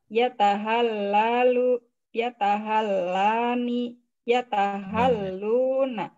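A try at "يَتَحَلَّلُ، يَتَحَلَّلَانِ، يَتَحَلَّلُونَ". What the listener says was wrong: Nah, sebenarnya itu hilang satu huruf. Yatahallalu, yatahallalani, yatahallaluna.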